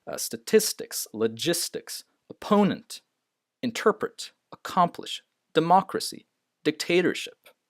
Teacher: Always the second, in these words, the second syllable is stressed.